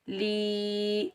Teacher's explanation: ये याए मद्दा है, इसको हम एक अलिफ की मिकदार खींच कर अदा करेंगे